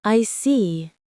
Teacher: When you show understanding with I see, your tone drops slightly to show calmness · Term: falling tone